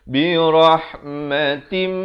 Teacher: Di sini idgham bi gunnah. Daripada tin jadi tim 2 harakat.